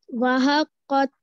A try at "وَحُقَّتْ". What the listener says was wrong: پیش ہے نا بیٹا پیش ہے وحقت ویری گڈ